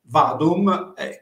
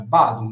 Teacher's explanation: questa V questa lettera Poteva essere anche sostituita con una b attraverso il betacismo